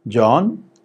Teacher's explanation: rising starts low goes up